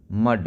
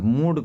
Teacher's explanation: देखिए यू का उच्चारण ह्रस्व होता है, तो आप मूड कहिएगा तो गलत हो जाएगा